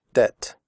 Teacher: In the word debt, the b is silent.